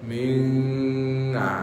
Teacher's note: Samarkan asalnya nun tu hujung lidah kan. Kaf belakang. Dia jauh sangat nun dengan kaf. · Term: ikhfa